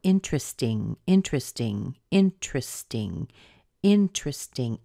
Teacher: The truth is the sound of an ST is, the T is somewhere in the middle between a T and a d.